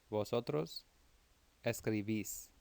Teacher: make sure you're hitting that accent under the last syllable